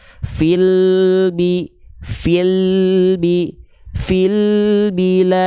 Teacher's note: ketika melafalkan lam sukun jangan memantul jangan terputus suaranya tapi dialirkan sedikit tanpa adanya pantul ya fil Bi fil Bi fil Bilad Masyaallah gitu Ya jelas